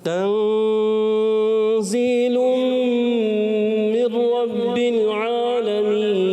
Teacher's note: اچھا بعض کہتے ہیں ان کو سختی والے حروف, سختی والے حروف نہیں ہیں, یہ نرمی والے حروف ہیں, اخفا حروف ہیں, مگر سیٹی ہوتی ہے ان میں. ذا میں سیٹی ہوتی ہے مگر سختی نہیں ہونی چاہیے